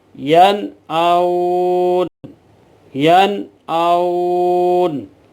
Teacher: اور نون ساکن تنوین کے بعد حروف حلقی میں سے یہ 6 حروف آ جائیں تو وہاں اظہار ہوتا ہے، یعنی نون کو ظاہر کر کے پڑھتے ہیں غننے کے بغیر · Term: اظہار حلقی